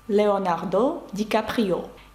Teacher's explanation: навіть в іменах та словах іншомовного походження французи також ставлять наголос на останній склад